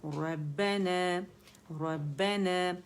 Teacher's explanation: یہ الف ممدودہ ہے, یہ نون کی آواز کو کھینچ رہا ہے, تو 2 کاؤنٹ کے لیے آواز اوپر جائے گی